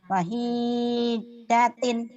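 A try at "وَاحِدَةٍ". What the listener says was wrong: Wahidatin. Lupa terus dia panjang pendeknya.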